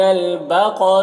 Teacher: قاف کو پر پڑھیں گے اور را کو یہاں پر باریک پڑھیں گے